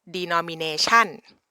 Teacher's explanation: They like to put like a high rising tone at the last syllable